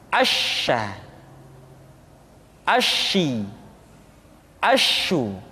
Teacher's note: sifat at-tafashi, yaitu menyebarnya angin di dalam mulut kita.